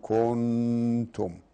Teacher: كنتم نفسها فيها حكم، فيها إخفاء حقيقي لأنه نون وجاء بعدها التاء